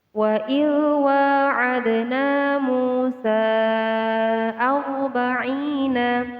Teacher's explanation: ro di sini dibaca tafkhim atau tebal